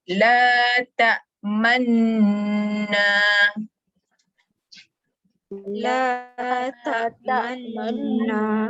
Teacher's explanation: muncungkan bibir 100%. Betul-betul muncung masa sebut man. Jangan lupa mesti dengung sebab nun sabdu, baru baca na panjang. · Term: bacaan Ishma